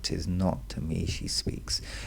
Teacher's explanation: Shakespeare puts the heavy trochee falling rhythm at the beginning, too bold.